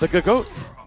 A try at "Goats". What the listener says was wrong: Yeah, but you don't pronounce the second G. So it's just goats. But you have to just assume there's a G before it. It's like, Jonak. You don't say J Jonak.